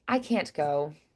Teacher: I'm still doing the T, it's just softened. I'm not putting as much air behind it. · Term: softened T